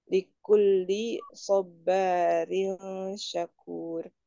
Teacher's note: Soba baknya mad tobi'i ketemu alif dibacanya dua harokat.